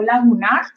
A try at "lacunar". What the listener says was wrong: Lacunar. se dice lacunar con C, lacunar. Sí, lacunar, no hay problema.